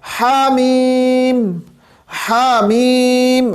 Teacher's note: اب یہاں پہ ہمارے پاس ہا آ رہا ہے، یہاں پہ ہمارے پاس ہا آ رہا ہے، اور ہا ہمیں پتہ ہے کہ وسط حلق سے ہی ادا ہوتا ہے، وسط حلق سے ادا ہوتا ہے، یعنی وسط حلق سے مراد حلق کا درمیانی حصہ۔